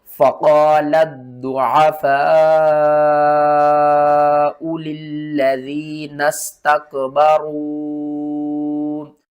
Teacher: اس لام کو ہم نے ضاد کے ساتھ ملانا ہے، اس کو 2 بار پڑھیں گے، سختی کے ساتھ پڑھیں گے۔ فا کو 5 الف کے برابر کھینچ کر پڑھیں گے، واو اور الف کو چھوڑ دیں گے۔